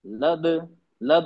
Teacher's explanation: लद लद आवाज पलट के आती कलकला होता है